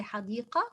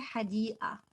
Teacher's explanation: We do not pronounce the qaf as in fusha. We just say hadii'a.